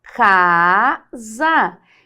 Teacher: esse S aqui ó ele é um som de z